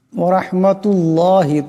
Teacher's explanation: করিয়া পড়তে হবে ওয়ারাহমাতুল্লাহি এখানে রাকে মোটা আওয়াজে পড়তে হবে ওয়ারাহমাতুল্লাহ এই আল্লাহ লামকে মোটা আওয়াজে পড়তে হবে